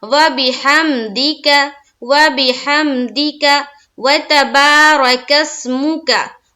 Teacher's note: रा को जल्द पढ़ेंगे और काफ को सीन से मिलाएंगे